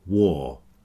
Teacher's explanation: This w does strange things. It changes the r sound into a or sound. So w a r is pronounced war to rhyme with for and door. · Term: long or sound